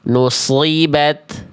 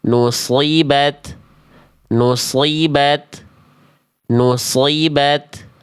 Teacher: Tak dalam kondisi sukun itu pasti percikan nafasnya akan lebih terdengar ya. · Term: ta sukunnya